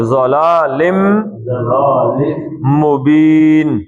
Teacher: اور لم مبین، یہاں پہ یرملون کا قاعدہ آئے گا، ضلالن نہیں آئے گا، لم آئے گا، میم آ جائے گا